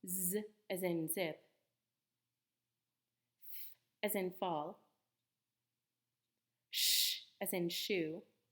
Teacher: as in tall b as in boy c as in code fricatives are sounds that Force the air flow through a tight space creating friction